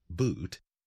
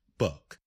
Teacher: A double O sound in English can be pronounced as oo, as in the word boot, or a, as in the word book